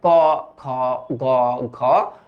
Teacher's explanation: কণ্ঠ থেকে উচ্চারিত হয় ক খ গ